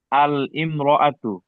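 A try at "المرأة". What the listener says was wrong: ইমরাআতুন শব্দের একটা নিয়ম আছে। ইমরাআতুন শব্দের শুরুতে আলিফ লাম এলে তখন উচ্চারণ হয় আল মারআতু। আল মারআতু।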